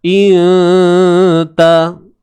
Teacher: Sembunyikan sebutan nun tu. Jangan bagi hujung lidah kena pada langit. Iaitu pada makhraj huruf nun tu. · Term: Ikhfa haqiqi